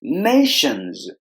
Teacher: there are two syllables in this word and we have to stress the first